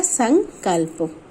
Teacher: माँ उसी वर्ग के पांचवें वर्ण में बदल जाता है और अब इसे अनुस्वार के रूप में दर्शाया जाता है।